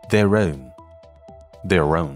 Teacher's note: ▁以字母▁r▁结尾，其后▁own▁以元音音素开头，所以要连读，这种语音现象叫做▁linking▁r。▁ 而在美音中▁their▁以▁r▁结尾，自然就要和其后的▁own▁开头的元音连读